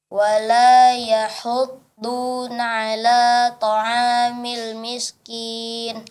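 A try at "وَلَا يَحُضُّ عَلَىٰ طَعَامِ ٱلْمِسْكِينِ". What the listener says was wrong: Ya, wala yahuddu ala, ya, tanpa nun. Wala yahuddu ala, ya. Iya, kemudian masalah huruf shad, dia huruf shad lebih mirip dengan huruf sin, ya, ketimbang dengan huruf shin, ya.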